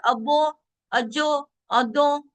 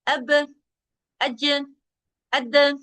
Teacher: با باریک ہے، جیم باریک حرف ہے، د باریک حرف ہے، ان 3 میں باریک قلقلہ ہوگا